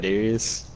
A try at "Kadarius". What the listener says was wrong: no, it's not how you say it. Yeah, you're not pronouncing the R, and that's the problem.